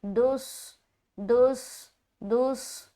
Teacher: जैसे ही दाल स्वाद से मिलेगा आवाज में एक मोटापन आएगा